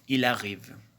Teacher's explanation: Lorsqu'un mot se termine par une consonne prononcée et que le mot suivant commence par une voyelle, la consonne finale du premier mot devient initiale du mot suivant. On dit qu'elle s'enchaîne à la voyelle du mot suivant pour former une syllabe. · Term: enchaînement